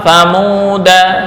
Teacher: lafal thamuda ini dibaca pendek walaupun ada alif